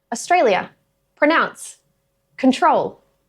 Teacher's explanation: Because the R is sitting directly before a vowel sound, it gets pronounced.